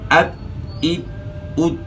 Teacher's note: زبان کی نوک ثنایا علیا کی جڑ کے ساتھ ہی لگ رہی ہے